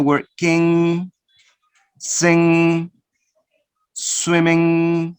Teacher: last nasal sound it is a velar sound nasal velar sound